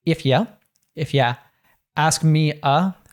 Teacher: YOU oftentimes we natives will reduce that to ya or yuh as he does here. · instead of saying A, we'll often say uh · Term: schwa